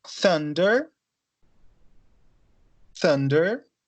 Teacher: Então, aqui são unvoiced, né? Lembrando só. Então, não tem voz, é só vento.